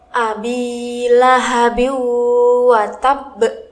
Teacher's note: Huruf ba yang ada di paling akhir dibaca sukun dengan pantulan yang kuat karena termasuk bacaan qalqalah kubro.